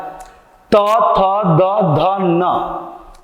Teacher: त थ द ध न, ये दांत से। दंत्य है।